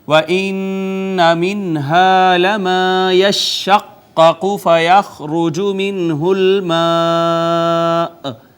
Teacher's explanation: نون مشدد پہ غنہ، نون ساکن پہ اظہار